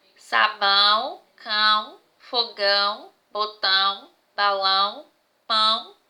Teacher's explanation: nos leva a perceber que são palavras nasalizadas que para falar para pronunciar essas palavras é o ar passa pelo nosso nariz então por isso são palavras nasalizadas porque todas as vezes que